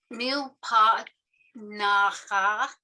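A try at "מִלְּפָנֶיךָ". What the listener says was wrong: This is a PH, milfanecha.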